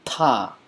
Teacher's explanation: I'm saying ta as in spitting. So it's a tongue-to-teeth sound